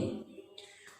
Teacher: अ का उच्चारण स्थान कंठ और ई का उच्चारण स्थान तालु, इसको कंठ तालव्य बोलते हैं।